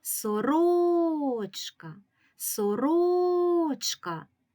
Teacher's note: це слово сорочка сорочка який склад ми вимовляємо сильніше склад ро склад ро наголошений у цьому слові